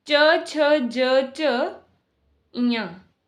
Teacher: इन्हें तालु वर्ग भी कहा जाता है। तालु वर्ण भी कहे जाते हैं क्योंकि ये तालु की सहायता से बोले जाते हैं। जो जिह्वा है वो तालु को स्पर्श करती है।